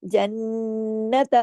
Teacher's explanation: یہاں دو نون ہے، آواز دیر تک ناک میں چھپی رہے گی، غنہ ہوگا، اکمل بڑے لیول کا، جنت۔